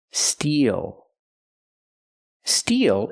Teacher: the long e like green beans plus the dark L